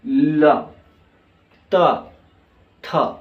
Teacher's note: इन वर्णों का जब हम इस्तेमाल करते हैं उच्चारण करते हैं तो जीभ का आगे का भाग दांत से टकराता है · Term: दंत वर्ण